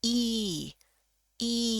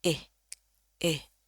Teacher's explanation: Kalau ini lidah bagian belakang itu yang dekat dengan pangkal lidah itu berasa lebih tegang. Jadi kalau dibunyiin I I bunyinya juga lebih panjang kalau di bahasa Inggris. I I. Kalau yang ini eh eh ini lebih pendek.